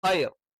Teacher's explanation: ഖൈ യ എന്ന് പറയുമ്പോൾ നാവിന്റെ മദ്യം മേലെ അണ്ണാക്കിൽ ടച്ച് ചെയ്തുകൊണ്ടാണ്